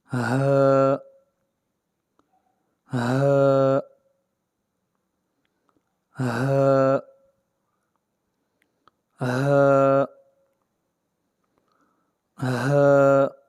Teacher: حلق کے سب سے نیچے والے حصے سے ادا ہوتا ہے۔ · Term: ہا کا مخرج